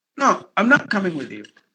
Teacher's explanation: Not should be given more volume because you're resisting.